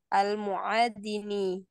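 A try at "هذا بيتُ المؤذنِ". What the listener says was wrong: Disambung saja bacanya hada baitul muadzini.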